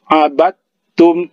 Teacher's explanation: dia dimatikan tapi kita langsung menyebut huruf ta langsung menyurut menyebut huruf ta itu bahasa sederhananya jadi abadtum jangan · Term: idgham mutajanisain